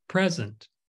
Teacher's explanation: the pre is stressed it's emphasized because it's a noun